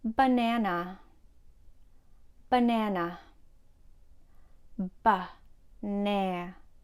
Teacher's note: The first and third syllable has the sound or the schwa. You can make the schwa sound by having your tongue in a mid-central position of your mouth, very relaxed, and say ah.